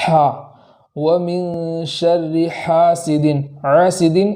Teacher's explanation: حا کو اس طریقے سے ادا کریں گے کہ اس میں آواز اچھے سے سنائی دے، عین کے مشابہ ہم کو نہیں پڑھنا، جیسے وَمِن شَرِّ حَاسِدٍ، حَاسِدٍ، تو اس طریقے سے حا نہیں نکالنا بلکہ اس طریقے سے نکالنا ہے، جیسے حا، وَمِن شَرِّ حَاسِدٍ، حَاسِدٍ، اس طریقے سے نہیں پڑھیں گے۔